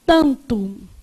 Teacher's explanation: Na palavra tanto, esse A é pronunciado com som nasal, não é? Então, esse N que está aqui, ele, na verdade, só serve para nasalizar o A.